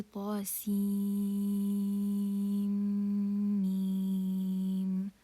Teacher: So we have to prolong ta for 2 counts. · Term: mad lazim harfi